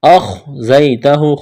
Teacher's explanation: کرنا ہے، دال ساکن ہے، قلقلہ کریں گے دال پر، اخزیتہ، خا کو موٹا کرنا ہے، زا میں سیٹی کی آواز پیدا کریں گے